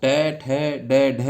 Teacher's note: ट, ठ, ड, ढ यानी ट वर्ग, यह मूर्धा। ये क्योंकि हम इसको याद भी रख सकते हैं, ये एक दूसरे से इधर उधर मुड़े हुए हैं, तो ये मूर्धा सा इसका उच्चारण होता है।